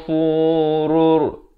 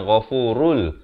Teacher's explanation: Di sini alif lam syamsiah, lamnya tidak dibunyikan ya.